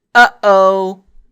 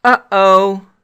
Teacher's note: if we said uh-oh, that sound is the glottal stop